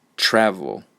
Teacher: there's a lot of air and sound coming out of my mouth for the beginning part of the word but for the second syllable I'm not trying very hard